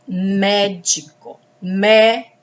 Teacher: A sílaba tônica é mé, que está acentuada.